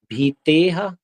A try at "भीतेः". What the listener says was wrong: अच्छा, भीते विसर्ग में हा क्यों लगाते हो। नहीं